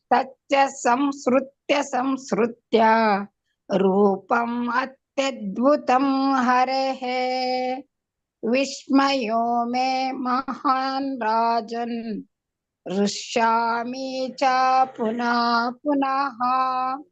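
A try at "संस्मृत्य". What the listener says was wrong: ಸ್ಮೃತ್ಯ ಅಂತಿದ್ದೀರ, ಸ್ರು ಅಲ್ಲ, ಸ್ಮೃ. ಅದು ಸ್ಮೃತಿ ಅಂತೀವಿ ನೋಡಿ. ಸ್ಮೃ ಬರ್ಬೇಕಲ್ಲ.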